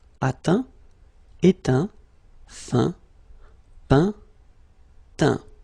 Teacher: as usual, final T not pronounced